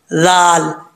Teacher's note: ज़ुबान की नोक ऊपर वाले दांतों के निचले हिस्से से लगे तो ज़ाल पढ़ा जाता है बग़ैर सीटी के